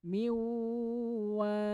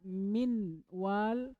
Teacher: Mana nunnya hilang langsung dimasukkan ke huruf setelahnya wau miwwal gak boleh dibaca Min Wal Kenapa karena dileburkan Ah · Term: Idam